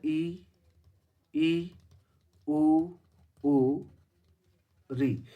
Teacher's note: इनको बोलते समय मुख लगभग क्या रहता है, बंद रहता है, मतलब बहुत कम खुलता है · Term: संवृत